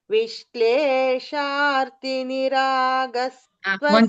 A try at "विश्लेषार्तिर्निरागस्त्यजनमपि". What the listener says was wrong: Vishleshartir. Vishleshartir. Shartir. Both should be here. Both R should be here. Vishleshartir.